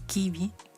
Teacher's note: La letra I da el sonido I como en español, pero más cerrado.